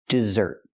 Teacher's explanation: the stress is on the second syllable, dessert. Pronounced just like the sweet food.